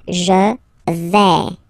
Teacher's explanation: when you combine this A-I, you get the sound A, really open